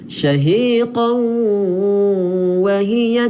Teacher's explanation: maka kita kena dengung dengan sengau. Sambil muncul mulut, huruf waw kita kena muncul mulut lah. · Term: idgham ma'al ghunnah